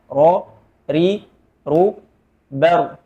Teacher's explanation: getarannya cuman satu kali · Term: takrir